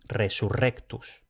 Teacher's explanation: también se pronuncia fuerte cuando aparecen dos RS, como en resurrectus.